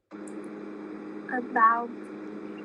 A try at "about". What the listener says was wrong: About, not about. It's actually b sound, not p.